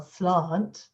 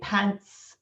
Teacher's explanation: So if you have a word like slant in standard Southern British English, it's got a long back vowel, slant. But if you say pants, it's got a short front vowel.